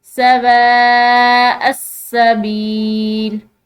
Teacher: हमजा के ऊपर ये बड़ी मद है तो यहाँ पर हमने इसको लंबा पढ़ना है